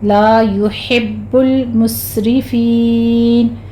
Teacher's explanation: لا يحب المسرفین، فین یہاں پہ ہم یا مدہ کے بعد وقف کر رہے ہیں عارضی طور پر، تو مدارس وقفی ہوگی جس کو ہم نے 6 کاؤنٹ کرنا ہے